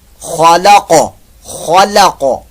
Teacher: خا پر موٹا اور جو قاف ہے یہاں بھی جو ہے پر موٹا ہی اس کو ادا کریں گے